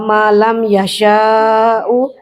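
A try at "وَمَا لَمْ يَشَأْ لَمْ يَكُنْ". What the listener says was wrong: ini salah, yasha langsung. Ini dicoret yasha, ya alifnya, alif tongkatnya. Itu satu paket dengan yang di atas ya.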